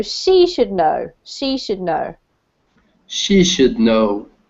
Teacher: And you put the emphasis on the person in this case.